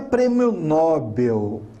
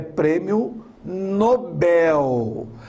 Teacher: A sílaba mais forte é o bel.